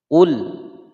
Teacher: lam bersukun dibaca jelas, tidak boleh dipantulkan. Qul salah ya, harus dibaca dengan jelas.